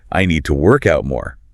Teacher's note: the preposition to softens completely into a lazy t sound